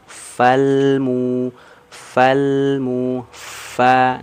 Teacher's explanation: hati-hati yang disentuhkan itu ujung gigi seri atasnya ke perut bibir bawah bagian dalam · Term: huruf Fa